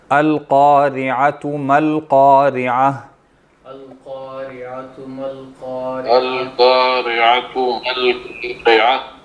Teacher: ہاں قاف موٹی پڑھیں گے نا، قاف ہے نا، قارعہ یعنی قارعہ، اور عین بھی ہے، را پہ زیر ہے، را باریک ہے، عین جو ہے وہ حلق سے موٹا اور قاف بھی موٹا۔